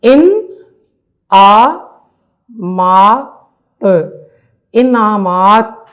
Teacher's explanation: ارکان، ارکان. یہاں پہ نون ساکن ہے اور ن اپنی پوری آواز دے گا